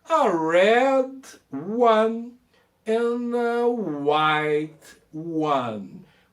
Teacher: a gente poderia juntar o D com a, e o N com a, white, não falo e o T trava, white one, ok?